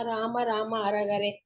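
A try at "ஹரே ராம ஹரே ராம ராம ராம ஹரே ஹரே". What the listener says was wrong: ஹர ஹரே சொல்லாதீங்க, ஹரே ஹரே சொல்லணும். ஓகே, ஹர ஹரே ஹரே சொல்லணும். ஓகே, ஹர ஹரே ஹரஹரோ ஹரா அது சொல்றதுக்கு தான் கரெக்டா இருக்கும். இங்க ஹர ஹரே கிடையாது, ஹரே ஹரே. ஒண்ணு இந்த ஹரே ஹரே சொல்றதுல கொஞ்சம் தப்பாது. ஏன்னா அதுதான் ஜபம் நம்ம நிறைய பண்றோம். அப்ப அது தப்பாவே நீங்க படிச்சிருந்ததுன்னா தெரியாமே இதுவாயிடும், ஆஃபென்ஸ் பண்ணிடுவோம் நம்ம தெரியாம.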